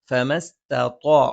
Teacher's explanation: മേലെ മുൻബല്ലിന്റെ താഴ്ഭാഗം താഴെ ചുണ്ടിന്റെ പള്ളയിൽ